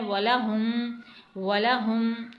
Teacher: اس ہا کو آپ کو سینے سے ادا کرنا ہے